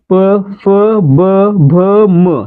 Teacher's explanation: का मोडतो, कारण प चा उच्चार करताना आपल्या ओठांची हालचाल होते, आपले ओठ एकमेकांना चिकटतायत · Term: औष व्यंजने, औष्ठ्य वर्ण